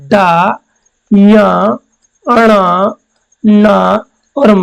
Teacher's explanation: इनका उच्चारण करने पर नाक से वायु ज्यादा निकलते हैं, नाक से क्या, गर्म वायु निकलती है। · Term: नासिक के व्यंजन